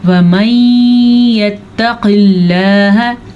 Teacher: اچھا جی، یہاں پہ ادغام بالکل ہو رہا ہے کیونکہ نون ساکن کے بعد یمون میں سے یا آیا ہوا ہے. البتہ قاف کو ہم موٹا کریں گے کیونکہ قاف حروف مستعلیہ میں سے ہے، لیکن لفظ اللہ کو ہم باریک پڑھیں گے کیونکہ لفظ اللہ سے پیچھے زیر ہے.